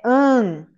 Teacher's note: O que significa que isso é um dígrafo vocálico. As duas letras formam um som de um A nasalizado.